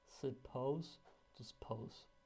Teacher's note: you can drop the schwa at the beginning